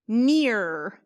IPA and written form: nɪr (near)